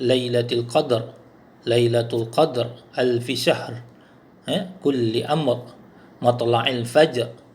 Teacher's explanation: Ra ni di ujung ni semua sekali dibaca dengan setengah harakat. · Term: hukum ar-raum